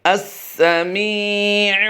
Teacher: میم یا زیر میم میں ہم نے اس لیے کھینچا ہے کہ یہاں پر یا مدہ کا قاعدہ ہوتا ہے